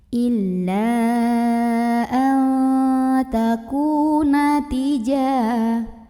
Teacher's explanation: Maka nun sukunnya ini dibunyikan samar-samar menuju huruf ta. Jadi bukan an tapi samar, tapi samarnya masih jauh lebih besar dibandingkan dengan dengungannya ya. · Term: ikhfa aqrab